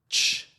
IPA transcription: tʃ